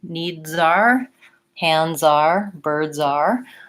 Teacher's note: I don't want to hear that noisy voiceless part and so I link and I put the Z on the next word